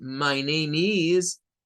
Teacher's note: debemos de usar el sonido voiced, que es el sonido vibrante, que es como una Z.